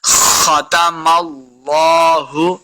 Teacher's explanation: اللہ کا جو لام ہے اس کے ساتھ ملانا ہے، اور لفظ اللہ کا لام ہمیشہ پر پڑھیں گے، یعنی موٹا کر کے پڑھنا ہے ، ختم اللہ، لام کے اوپر کھڑی زبر ہے، اس کو